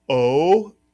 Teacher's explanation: If you said O as in Coke or as CocaCola, you are correct. The Israelis tend to pronounce it O not as much of a long O. We are learning it, however, as an O and it's called the actually is the mala because it has the VV underneath it.